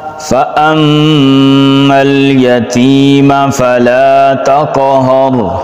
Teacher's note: میم مشدد غنہ ایک الف کے برابر، یتیمہ یا مدہ کھینچ کے پڑھیں گے.